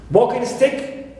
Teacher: we stress walking, the gerund, first part